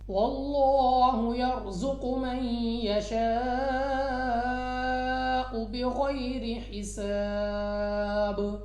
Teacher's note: لام اف اللہ سے پہلے حرف پر زبر، تو اس لام اف اللہ کو پر یعنی موٹا پڑھا جائے گا